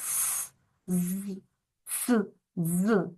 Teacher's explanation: просто вимовляємо і чуємо свис Так с з с ДЗ Так ми чуємо начебто вони утворюються за допомогою свисту тому вони і називаються свистячими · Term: свистячі